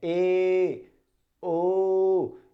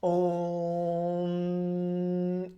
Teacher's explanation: प्लुत स्वर में क्या होता है? इनमें समय लगता है 3 गुना।